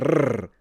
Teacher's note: Now, in Victorian accents, that sometimes at the beginning of words the R is actually fully rolled